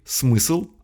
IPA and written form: smɨsɫ (смысл)